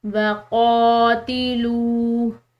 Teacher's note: لام کے بعد واو ساکن ہے تو اس کی وجہ سے ہم اس کو پڑھیں گے ایک الف کی مقدار کھینچ کر